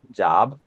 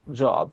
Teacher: when you speak British English, you say O. When you speak American English, you say ah.